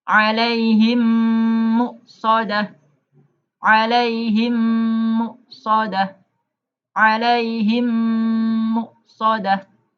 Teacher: mim sukun dimasukkan atau digabungkan dengan mim di depannya dan didengungkan. Ya. Mim sukun bertemu mim, maka cara membacanya mim yang pertama dimasukkan mim yang kedua. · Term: idgham mimi